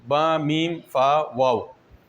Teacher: इन हुरूफ की अदायगी के वक्त होंठ हिलते भी हैं और मिलते भी हैं। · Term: हुरूफ शफ़वी